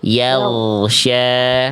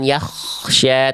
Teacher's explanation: Gain tanpa nafas hanya mengalir suara. Kalau ko mengalir suara dan nafas. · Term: gin sukun